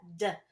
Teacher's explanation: sound similar but b my lips are are coming together but d my tongue is touching the roof of my mouth and it's bouncing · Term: d sound